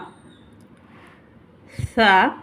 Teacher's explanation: அதாவது நம்மளுடைய 2 பல்லு இருக்கு இல்லையா, மேல் பல் கீழ் பல்லுக்கு நடுவில் நம்மளோட நுனி நாக்கை வந்து செலுத்தி ஓதுற மாதிரி இருக்கும்